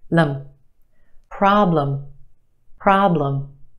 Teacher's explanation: the aah problem is stretched and emphasized in the first syllable our second syllable is where you have your schwa